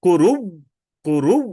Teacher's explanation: মানে ওই হামজাকে ওয়া বানাইয়া দেওয়া, মানে প্রথম ওয়াওয়ের সাথে ইদগাম করা, করু বলে অফ করা।